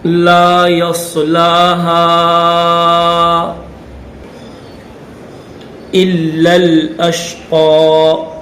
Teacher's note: صاد کو موٹا کریں گے، ہا کے اوپر چھوٹی مد ہے تو تین الف کی لمٹ میں کھینچیں گے